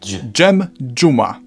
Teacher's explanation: We've covered z turning into ż, and now this can merge with a d into dż.